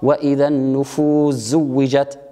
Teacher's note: بإدغام السين في حرف الزاي